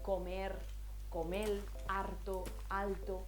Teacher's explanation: no se cambian todas las R's por L's, solamente las que están en posición implosiva, o sea, a final de sílaba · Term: lambdacismo